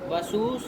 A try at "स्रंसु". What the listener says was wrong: स्रंसु, अनुस्वार बोलो। स्रंसु स्रंसु